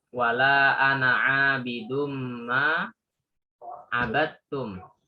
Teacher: Nah, itu Langsung dal masuk ke ketemu dengan ta. Dal ketemu dengan ta itu juga idgham dimasukkan ya. Dal masukkan ke huruf ta dan itu idghamnya idghamu tajanisai.